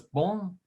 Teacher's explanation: Now that on is kind of a nasal sound. It's coming through the nose